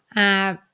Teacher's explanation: do not release the air at the end of the final consonant so you will say app and hold the air back H